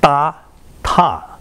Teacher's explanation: da and ta only differ about 30 milliseconds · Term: voice onset the time